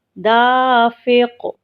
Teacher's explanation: دال الف زبر دا، فا فی، دافی، قاف دو زیر قن، دافق، اور وقف کیسے کریں گے؟ دافق، قاف چونکہ حرف قلقلہ میں سے ہے اس لیے اس کو ہلائیں